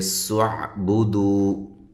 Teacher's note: نا الف مدہ ہے، ملا کے پڑھیں گے سعبدو۔ سین کو باریک سیٹی کے ساتھ، عین کو واضح نکالنا ہے۔